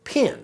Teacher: for Southern accents, the vowel sounds i and e are pronounced the same way. So, this word is pin, but this word is also pin. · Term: pin-pen merger